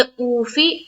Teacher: اوفی او میں واو مدہ اور فا کو ہم جلد پڑھیں گے